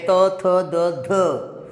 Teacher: દંત્ય એટલે કે મારા બે દાંતની વચ્ચે આવતું હોય કે ભાઈ ત થ દ ધ, બરાબર.